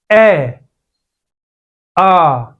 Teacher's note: ए, आ, दोनों गले से बोले जाते हैं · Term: कंठे स्वर